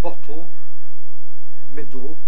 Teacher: where you have, yes, lateral release before a syllabic consonant